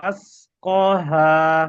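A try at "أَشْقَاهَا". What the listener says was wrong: হ্যাঁ ওই শিনটা তাহলে স পড়তে হবে আশ ক, হ্যাঁ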